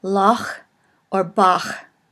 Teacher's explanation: Now the next letter is one of those which is a little bit difficult to pronounce if you're used to speaking English all the time, because it is a chet and it is called a guttural, and it is sort of pronounced in the back of the throat as in the name Loch or Bach. Those who might speak German would have an easier time understanding this particular sound, but practice it as it is a ch sound.